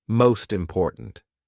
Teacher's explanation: I want you to imagine that it's like this, most important. The T actually goes in front of important.